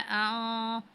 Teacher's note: अब नून साकिन है और गौद आ रहा है, तो यहाँ पे हमने इख्फा की सूरत में गुन्ना करना है।